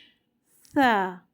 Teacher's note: اوپر کے جو دانت ہیں ثنایا علیہ کے جو کنارے ہوتے ہیں، ایجز ہوتے ہیں اوپر کے دانتوں کے، وہاں پہ جا کے یہ زبان ٹچ ہوتی ہے، یہ اس کا مخرج ہے۔